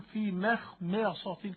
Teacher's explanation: في مخمصة الميم مرققة والخاء مفخمة والميم مرققة والصاد مفخمة، تلاقي الشيخ بيقول في مخمصة، كأنه بيعد الحروف عدا، كأنه بيعد الحرف، ويقول لك أيها المستمع الكريم افهم بأن هذا الحرف مفخم أو مرقق.